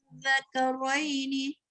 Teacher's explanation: 6 harkat dan zal yang bertanda sabdu itu di hujung lidah makhrajnya.